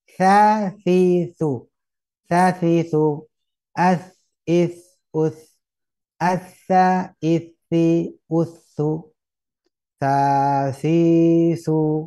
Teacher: keluar dari ujung lidah yang menyentuh ujung gigi seri atas.